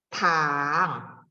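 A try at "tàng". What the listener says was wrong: Nada tiga, tang. Nada empat. Belum, masih naik belakangnya. Lebih turun, ditekan lagi, Bu. Tang. Iya, G-nya jangan naik ya.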